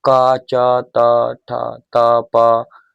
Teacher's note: जिनको बोलने से कंठ में कंपन ना हो वो क्या कहलाएंगे, तो तुम्हारे अघोष वर्ण कहलाएंगे